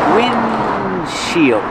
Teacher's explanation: you don't really hear the D because it's a stop D